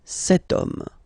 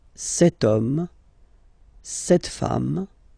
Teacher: But then it starts with H, as in French, H is not pronounced, so the first sound that we hear is O